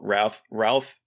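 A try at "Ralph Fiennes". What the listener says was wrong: Ray Fiennes. I think it's Ray Fiennes. It's like, you don't pronounce it like Ralph. No, you don't pronounce it like Ralph.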